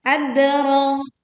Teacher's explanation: Lalu kita memantulkan dal sukun dengan suara yang kuat. Adra. Ro-nya panjang 2 harokat.